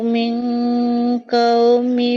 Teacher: Kan min menjadi mil oh ya, kebetulan ini bertemu o, jadi maksudnya tuh huruf eng-nya lebih dominan, jadi kedengarannya seperti mil ya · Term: Ikfa